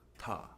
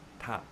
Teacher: And if I do a Japanese version of TA, that will be T. It's, as you can hear, it's happening more back of the throat